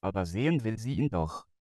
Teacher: You can already hear that the TTS system sounds a bit more boring because the pitch contour is more flat